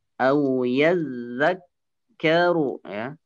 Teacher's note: Au yazakkaru, ru-nya pendek, langsung ke huruf fa.